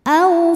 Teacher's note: harf Lin sebab ada wau sukun didahului baris fathah maka dibacanya lembut atau lunak